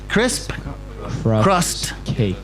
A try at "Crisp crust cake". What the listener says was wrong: No, you're saying cross.